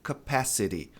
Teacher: T numa sílaba átona, ladeado por vogais, ele vai ter esse som de re